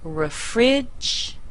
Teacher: the first syllable is weak that means we're going to say uh instead of the E there